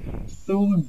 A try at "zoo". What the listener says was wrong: Su, zoo. So the Z, the initial Z sound, is harder for you.